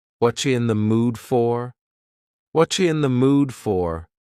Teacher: Here the word you has been reduced to cha cha. This is extremely common in spoken English that the word you gets changed up in a lot of ways.